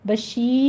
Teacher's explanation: شین کی آواز آپ کی تفشی پھیلی ہوئی سی آواز آئے گی